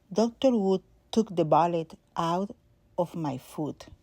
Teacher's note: the words wood, bullet, and foot have a short back U, which is relaxed under the chin, less lips, very gentle lips. Dr. Wood, the lips are intense for the W, but not for the vowel after it.